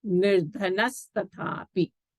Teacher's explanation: Yadyapi nirdhanaha tathapi danam karoti. So here this visarga will become a sakara, nirdhanas tathapi, because it is followed by a ta